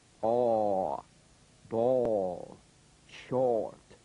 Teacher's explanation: The midway lip opening produces the vowel sound aw, as in ball, ball, short. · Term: Number three vowel